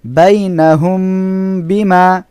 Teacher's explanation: মিম সাকিনের পরে বা এসেছে বা হলো শাফা এর অক্ষর এজন্য এখানে গুন্না করে পড়তে হবে